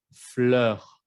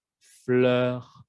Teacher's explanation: Por lo general, si viene una R después, otra consonante, por ejemplo, fleur. No es E, es ER. Mi boca es un poco más abierta.